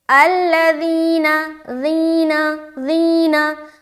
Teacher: जब इस हर्फ को अदा करेंगे ज़ाल को तो इसमें सीटी वाली सिफत जाहिर नहीं होगी, जैसे कि अल्लज़ीना, ज़ीना ज़ीना।